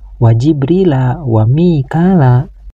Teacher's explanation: Huruf ba sukun ini harus dibaca qalqalah, yaitu qalqalah sugro. Artinya qalqalah kecil karena disukunkannya huruf ba ini berada di tengah bacaan.